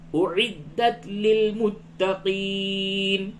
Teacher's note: اعد پہلے حمزہ کی آواز، اس کے بعد عین کی آواز